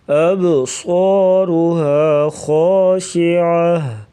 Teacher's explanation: اب با ساکن تو یہاں پر قلقلہ کر کے پڑھا جائے گا اور صاد کو موٹا پڑھیں گے